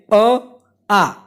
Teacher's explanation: તો અ અને આ બોલો એ કંઠમાંથી બોલાય છે. એનું સ્થાન છે કંઠમાંથી, એટલા માટે એનો પ્રકાર છે કંઠ્ય.